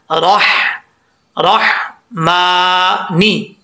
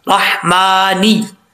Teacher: नून से नी होता है, ने नहीं होता